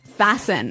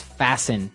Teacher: The T kind of becomes silent.